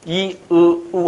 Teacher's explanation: 입은 별로 안 벌린 상태에서 고모음이죠. 안 벌린 상태에서 이, 우 하면 혀끝이 이렇게 뒤로 말려 들어갑니다.